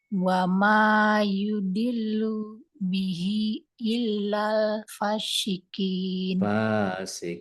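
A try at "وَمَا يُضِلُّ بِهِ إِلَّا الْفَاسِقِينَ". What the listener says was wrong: Fa-nya panjang. Kalau baca sa-nya jangan at-sa, tapi sa.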